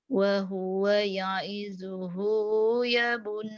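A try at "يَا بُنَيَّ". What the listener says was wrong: panjang. Wa huwa ya'iduhu ya bunayya panjang ya-nya ya.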